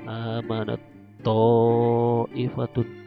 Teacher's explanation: seolah-olah tak sukun ini hilang, langsung ke to ditasdidkan seperti ini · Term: idgham mutajanisain